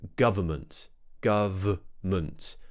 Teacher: However, you might hear a lot of native speakers just say government, where they actually remove the N in the middle. So instead of saying government, we'll actually say government, government, which is absolutely fine, especially if you're talking fast enough.